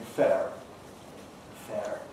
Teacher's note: Americans kept the R, but shortened the vowel, giving fair.